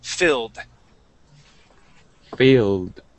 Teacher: this has an ed ending that sounds like a D.